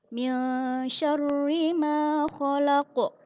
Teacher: Dibacanya dengan pantulan suara yang besar karena terletak di akhir ayat dan disukun karena adanya ayat tersebut karena waqaf. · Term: qalqalah kubra